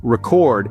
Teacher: a piece of data or information stored for future reference but if you stress the second syllable record it turns into a verb meaning to capture sound or video for future use